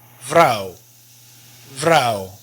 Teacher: the V here is still a V sound, but it's not a very strong V. It's closer to the F.